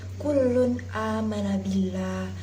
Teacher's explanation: Salah satu contoh bacaan idhar yaitu terdapat dalam surat Al-Baqarah ayat 285 yang berbunyi kullun amana billah. Pada kata kullun a harus dibaca jelas dan tidak boleh terpengaruh huruf setelahnya.